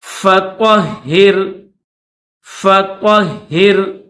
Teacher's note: فا کے اوپر زبر ہے اور طا ہے، اس کو موٹا کریں گے، یہ بڑی طا ہے۔ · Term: موٹی طا